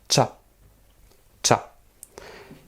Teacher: Il faut imaginer que devant, il y a un T pour la prononciation.